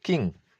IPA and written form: kɪŋ (king)